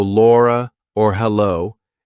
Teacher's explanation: we do a light l for a vowel so Laura or hello if there's a vowel after it it's light